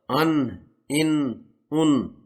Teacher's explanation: नून जबान के सिरे को सामने ऊपर वाले छह दांतों के मसोड़ा से अदा होता